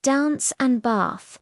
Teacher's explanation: In American English, it's typically a short a sound as in cat.